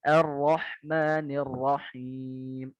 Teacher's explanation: betulkan bacaan ro-nya satu getaran aja